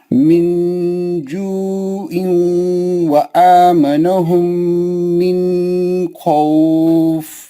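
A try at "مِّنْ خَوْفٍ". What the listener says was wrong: मिन में गुन्ना नहीं करना, नून को जल्दी पढ़ना।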